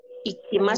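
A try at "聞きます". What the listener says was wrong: Kiki, ya. Kinya dua kali. Kikimas. kiki. Ya, kalau bukan ikimas. Kalau ikimas kan pergi. Kalau kikimas, mendengar, ya.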